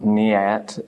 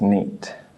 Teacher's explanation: The A becomes silent. It's not niat, it's just neat. Okay, this becomes the long sound again.